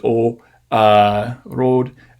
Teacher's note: she doesn't have diphthongs for her o's